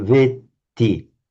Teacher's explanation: You did the long A very correctly, but with just a single T. Just hold that T a little bit longer. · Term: double T